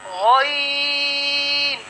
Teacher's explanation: गॉइन जो हर्फ है ये हलक के ऊपर वाले हिस्से से अदा होता है